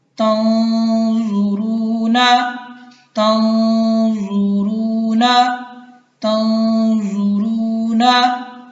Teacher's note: ٹھیک ہے، گنہ ہوگا. نون کو اپنے مخرج سے ادا نہیں کریں گے بلکہ خیشوم جو ہے اس کے قریب جو ہے نون کا جو مخرج ہے وہاں سے ہم نون کو ادا کرتے ہوئے اخفاء کریں گے